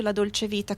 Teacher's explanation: we say the C in dolce like a ch sound and the t is prominent